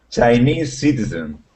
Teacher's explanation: I think you have to stop between Chinese and citizen